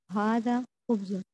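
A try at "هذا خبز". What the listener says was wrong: And it is better to not read the last vowel of the sentence. Haza khubz.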